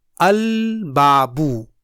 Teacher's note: जैसे अल बाबू में अल के बाद बा हर्फ कमरी है, इसलिए यहाँ अल का लाम पढ़ा जाएगा। जैसे मेरी आवाज़ गौर से सुनिए, अल बाबू। · a lunar letter does not get assimilated in the letter preceded by lam of al as ba in al-babu